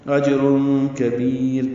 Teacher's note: تنوین کے بعد کاف آنے کی وجہ سے اخفا ہے